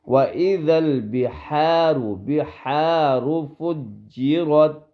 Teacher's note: یہ ہا یہ گلے والی ہے، گلے والی درمیان والی ہے